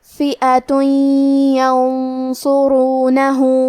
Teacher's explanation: کلمت ینصرونہ میں یا حروف الادغام بغنہ میں سے ہے، تو ہم یہ تنوین کو یا میں ملا کے غنہ اور تشدید کے ساتھ یہ حکم کو ادا کریں گے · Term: حروف الاخفاء